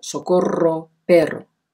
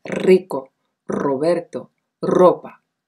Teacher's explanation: la vibrante múltiple se pronuncia en posición intervocálica donde se escribe con ere doble